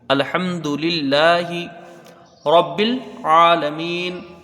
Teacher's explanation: لفظ اللہ کا لام باریک ہوگا، لام میں کھڑا زبر ہے، ایک الف کی مقدار رہے گی، ہا کے نیچے زیر ہے، اسے جلدی پڑھیں گے اور باریک پڑھیں گے۔